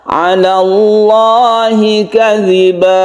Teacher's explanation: Nah, tadi adalah hukum lam jalalah ya. Dibaca tebal atau tafkhim karena sebelumnya ada fathah. 'Ala Allahi kadziba.